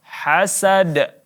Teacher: hasad di sini kita pentulkan huruf dalnya sehingga terbunyi seperti qalqalah. Hasad. Ya, ini bunyi qalqalah wusta.